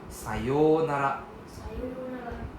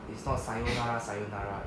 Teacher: So please drag out the O sound. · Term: long O sound